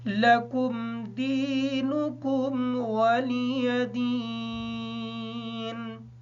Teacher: یا ساکن ہونے کی وجہ سے دال کو تھوڑا سا لمبا کر کے پڑھیں گے